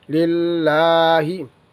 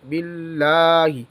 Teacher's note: لام بریک پڑھیں گے کیونکہ لام کے نیچے زیر ہے